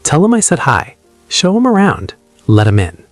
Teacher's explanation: Give 'em. Yeah, you almost never hear the full them in casual speech · The TH just evaporates.